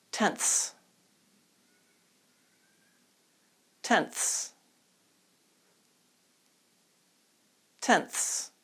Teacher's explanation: make sure your tongue comes out you are not saying tense you're saying tenths